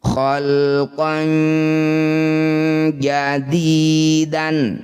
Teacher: Khalqan fathah tanwin bertemu jim disebut bacaan namanya ikhfa awsato. Bunyi fathah tanwin dengungkan 2 harokat. Saat dengung lisan sudah ada di jim, bersiap bunyikan jim.